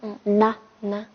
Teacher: 以说必须要写长一点。好，那么它的发音方法呢？发音方法是送气清三音。对，送气清三音。好，它。好的，那么给它加上另外的一个音节，塔恰是知道。塔恰是最近在哪里，对吧？或者说最近在哪里？塔恰然卡巴语，对吧？好，或者再给它组另外一个词的话，坦大是단다是现在的对意思。那么现在几点了？怎么说？단다초초에가츠레。很好，现在几点了？就是단다초초에가츠레。对吧？단다。好，那么我们来写一下这个。好，首先是一横，竖这样一撇。那么这个的话特别简单，也就是只有3个步骤组成的。好，那么这个它记住了吗？记住了。好，再看一下第3组的最后一个，是那。好，那么它的发音部位还是舌尖中，对不对？对。好，那么它的发音方法呢？发音方法是浊鼻音。对，还是感觉这个是那，就是 读的时候感觉这个声音是从鼻子里面出来的那种 ，对吧？对。那浊鼻音，那。好，那么拿的话已经构成一个独立的单词，是什么意思？是痛和病的意思。